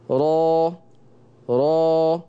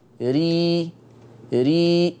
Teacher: يبقى مؤخرة لساني عليت في الراء المفتوحة والمضمومة، ونزلت في الراء المرققة المكسورة. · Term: الراء المفخمة